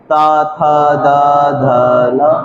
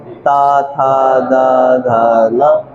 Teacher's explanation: हल्का हल्का दांतों का स्पर्श होना चाहिए